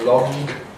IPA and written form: lɒŋg (long)